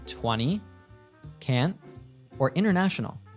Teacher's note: When we have an N and T together, usually we drop the T